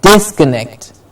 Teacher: Disconnect. Dis gets the stress.